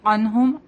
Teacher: رضی اللہ عنہم عین نون ساکن کے بعد ہا ہے یہاں پہ تو ان کو ظاہر کریں گے. عنہم عین بولیں گے اس کو حمزہ کی طرح نہیں بولیں گے.